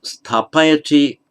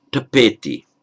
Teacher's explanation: In Pali, what happens is, stapayati, the st becomes just an aspirated t, subdotted t. The a shortens.